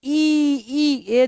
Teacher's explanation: તાળવામાંથી નીકળે છે એને આપણે ઈ જે છે એ તાળવામાંથી નીકળે તમે ઈ બોલોને તો તાળવે ઉપર જે છે એ તમારી જીભને લઈ જવી પડે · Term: તાલવ્ય